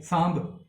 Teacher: ਸੋ ਸਾਂਭ ਦੇ ਵਿੱਚ ਵੀ ਹੁਣ ਜੋ ਇਹ ਮੀਮ ਹੈ ਅਲਫ ਤੇ ਬੇ ਦੇ ਵਿੱਚ ਜੋ ਮੀਮ ਆ ਰਿਹਾ ਉਸ ਦੀ ਆਵਾਜ਼ ਪੂਰੀ ਨਹੀਂ ਆ ਰਹੀ, ਸਾਂਭ ਥੋੜੀ ਜਿਹੀ ਆਵਾਜ਼ ਆ ਰਹੀ ਹੈ, ਅਚਾਨਕ ਆਵਾਜ਼ ਆ ਰਹੀ ਹੈ।